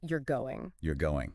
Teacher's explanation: If I say it with a flat tone, it's just a simple statement. Yeah. But if I say you're going with that rising intonation at the end, Oh, it's a question.